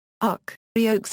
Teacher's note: ends with a velar fricative consonant, which otherwise does not exist in English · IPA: [ʌx]